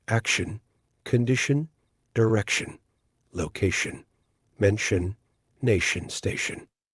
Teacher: of those it's pronounced Shan at the end shun so it's different spellings different endings but the pronunciation is shun for all of them · And all of those, it's pronounced shun at the end, shun.